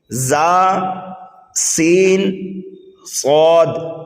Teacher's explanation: ایک چیز اور یہاں پر بتا رہے ہیں، ان 3 حروف زا، سین، صاد، ان کو ادا کرتے وقت، یعنی ان 3 حروف کو ادا کرتے وقت سیٹی کی طرح تیز آواز نکلتی ہے. اس لیے ان حروف کو حروف صفیریہ یعنی سیٹی والے حروف کہتے ہیں.